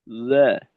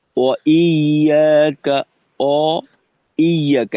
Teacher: ঠোঁট গোল করা, ওয়াওয়ের মাখরাজের কারণে, জবরের কারণে ঠোঁটটাকে খোলা, এই দুইটা অবস্থা শুধুমাত্র ওয়াবের উচ্চারণেই থাকবে। ওয়া, এই উচ্চারণটায় দুইটা অবস্থা ঠোঁটের, শুরুতে গোল, পরবর্তীতে পূর্ণ খোলা।